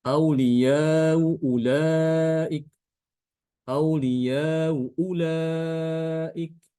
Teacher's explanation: tidak dibuang hanya dibaca tashil gitu aja Hamzah pertamanya dibaca tashil